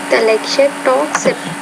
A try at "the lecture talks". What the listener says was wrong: Okay, there, again, that T, it's a T, not the lecture talks, but the lecture talks. So you're not putting enough aspiration with that particular sound. You're kind of, it almost sounds like a D sound. So be careful about the T versus a D consonant sound.